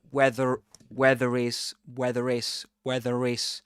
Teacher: She produces this very gentle r sound. That's linking ra, the linking ra.